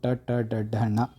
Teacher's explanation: ಮೂರ್ಧನ್ಯ ನಾಲಿಗೆಯ ಮೇಲ್ಭಾಗದಿಂದ ಹುಟ್ಟುವಂಥ ಅಕ್ಷರಗಳು